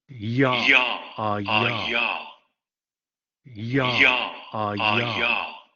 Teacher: La tenemos también en francés, palatal aproximante sonora.